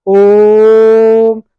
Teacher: तो लंबा खींचते हैं, जहां पे दीर्घ से भी ज्यादा समय लगाते हैं, तो वहां पे क्या होगा, वहां पे होगा प्लुत स्वर।